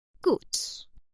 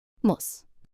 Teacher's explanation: In gut, the U is long, pronounced like the U in moon. You can hear the U clearly and for a little longer.